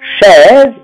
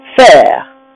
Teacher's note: vous voyez qu'on ouvre la bouche, c'est un E ouvert · E ouvert, c'est-à-dire que la bouche descend E. On prononce E ouvert quand le AI appartiendra à la syllabe forte, ce qu'on appelle la syllabe tonique.